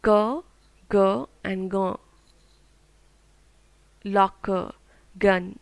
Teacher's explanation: sounds are made by raising the back of the tongue towards the soft palate